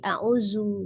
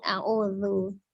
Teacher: Lidahnya ada di ujung gigi seri atas. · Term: zal